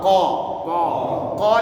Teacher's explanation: pangkal lidah ketemu langit langit lunak di belakang sana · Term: huruf Q